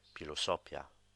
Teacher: it just sounds like a normal P with a slight breath at the end of it to denote the H